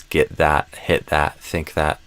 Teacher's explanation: the voiced TH tends to be more dental, pronounced with stronger pressure, when it's preceded by an unvoiced consonant, such as T, K, and so on.